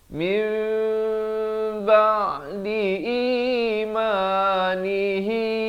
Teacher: Ditukarkan bunyi nun kepada bunyi mim. Daripada min jadi mim. Bibir itu sekadar bersentuhan atau hampir bersentuhan. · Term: iqlab